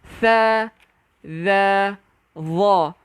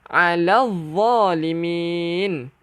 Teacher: Jadi 3 huruf tersebut kena keluarkan hujung lidah.